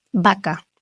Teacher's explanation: Es decir, que cuando yo digo vaca con b, eh, mis labios se unen, pero no hay un contacto con los dientes. Vaca.